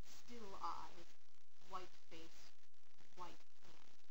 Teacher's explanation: Other patterns we can see in the rhythm is the 2 heavily stressed syllables right together